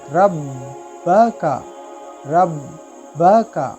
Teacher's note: यहाँ बा जो है वो हुरूफ कलकला में से है, इसलिए इसको थोड़ा जमाव के साथ पढ़ना है, रुक के।